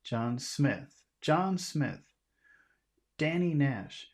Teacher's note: So you emphasize the first name.